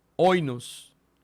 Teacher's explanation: es un espíritu suave y por tanto no se aspira.